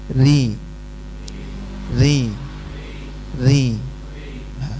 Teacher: sekarang yang kasrah tipis kayak orang cadel getarannya enggak begitu ee nampak tapi ada ya ri Dzi ri kayak orang catel ya. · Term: kasroh tipis